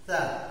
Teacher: Jadi posisi lidah kita itu di bawah gigi bahagian atas.